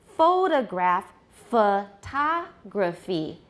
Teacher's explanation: The unstressed syllables in both cases become schwas, but they're different syllables.